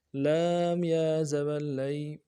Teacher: لام یا زبر لی، یا لین ہے، یا لین کو نہیں کھینچتے ہیں، یا مدہ کو کھینچا جاتا ہے، تو یا لین کو بالکل نہیں کھینچیں گے، نرمی سے پڑھیں گے